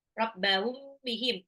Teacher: mim sukun ketemu ba harus agak ditahan. Rabbahum bihim ikhfa syafawi.